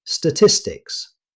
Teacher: This word is extremely common in business and research. Native speakers usually say statistics. The stress falls on tis.